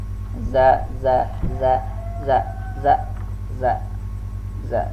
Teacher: Nah jahar ya, tanpa mengeluarkan udara, ini harus dilatih ya, tanpa ada udara atau nafas yang keluar di saat kita melafazkan huruf za, dan dia rakhawah. · za ini termasuk rakhawah, dia berlalu